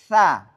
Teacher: Tsa ini pangkal lidah atau lidah tidak naik ke atas. Nah, sehingga bunyinya tipis.